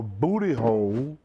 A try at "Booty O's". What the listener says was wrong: Booty O's. O's. It sounds like you're saying hole.